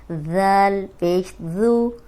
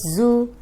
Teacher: ذال جو ہے وہ نرم حروف ہے اور اس میں سیٹی کی آواز نہیں آئے گی۔